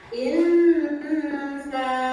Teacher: ikhfanya nun sukun disambut oleh huruf sa. Nah, maka itu berdengung. Nah, bunyinya insa.